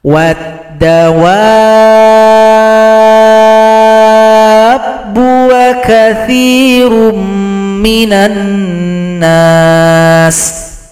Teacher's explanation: Mad jumpa tasydid disebut dengan mad lazim mutsaqqal kalimi. Panjangkan dulu 6 harokat atau 6 ketukan, baru ditasydidkan kepada huruf ba.